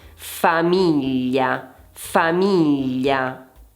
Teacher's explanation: Qui abbiamo 3 sillabe e l'accento va su mi.